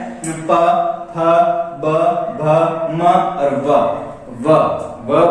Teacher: ओष्ठ होठों की सहायता से बोले जाने के कारण इसे ओष्ठीय ध्वनि कहा जाता है। ओष्ठीय ध्वनि, या तो इसमें प वर्ग पूरा ओष्ठीय ध्वनि होता है।